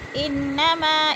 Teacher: انما، ان کی نون مشدد ہے، سختی سے جمع کر پڑھیں گے۔ ما میں مد منفصل ہے، 4 الفی مد ہے، 4 الف کے برابر کھینچ کر پڑھیں گے